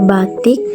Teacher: huruf i kapital tinggi ke bawah pada silabil tertutup seperti kata batik ditutupi oleh konsonan k